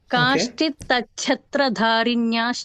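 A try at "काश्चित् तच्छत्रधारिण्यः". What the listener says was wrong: And Kashchit single ta and then chhatra. The ta becomes cha.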